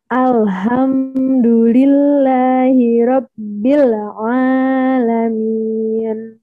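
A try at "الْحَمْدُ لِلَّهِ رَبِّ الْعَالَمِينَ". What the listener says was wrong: Ya, tapi ainnya 2 harokat saja, 1 ayunan. Jangan sampai kepanjangan. Alhamdulillahi rabbil alamin.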